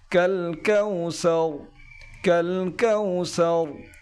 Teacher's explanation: লাস্টে যে রটি রয়েছে এই রটি একটু পুর করে উচ্চারণ করতে হবে